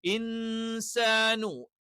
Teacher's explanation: നൂനിനെ മറച്ചു മണിക്കണം അവ നൂൻ അല്ലാത്ത രീതിയിലേക്ക് ഇൻസാനു എന്ന് പറയാൻ പറ്റില്ല ഇൻസാനു അവ നൂൻ ഉണ്ട് എന്ന് നമുക്ക് മനസ്സിലാകും പക്ഷേ നൂനിനെ നമ്മൾ എന്ത് ചെയ്യും ജസ്റ്റ് ഒന്ന് മറച്ചുവെച്ച് ഉച്ചരിക്കും